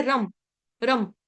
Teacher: र के ऊपर जो अनुस्वार है उसका उच्चारण हलंत म से करेंगे। क्यों? क्योंकि आगे आ रहा है ब फ भ म प फ भ म तो यहां पे रम रम।